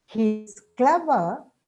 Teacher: It's a fall followed by a rise. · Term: fall rise